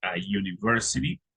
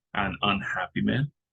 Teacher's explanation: These examples show that certain beginning letters can have either a consonant or a vowel sound. A word that begins with U can begin with the consonant Y sound, as in university, or with the vowel sound, as in unhappy.